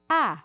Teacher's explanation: Eu tenho a língua tranquila, um pouquinho mais baixa. Eu tenho a mandíbula um pouco mais abaixada, um pouco mais aberta. Eu tenho céu da boca também mais elevado. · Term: vogal A